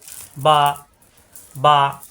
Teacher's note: মিলানো ঠোঁট ছেড়ে দিলে হয়ে যাবে বা।